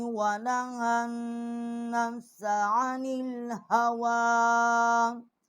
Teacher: یہ ہا بڑی ہے، یہ اقصائے حلق جو ہے وہاں سے اس کا مخرج ہے، اور اس کو ہم نے یہاں غنہ کیا ہے عن الہوا، اور یہ بھی بڑی ہا ہے، یہ بھی اقصائے حلق سے اس کا مخرج ہے.